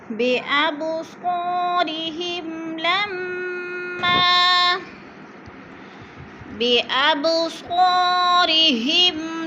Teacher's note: بِأَب پہ قلقلہ کریں گے کیونکہ با حرف قلقلہ میں سے ہے اور ساکن ہے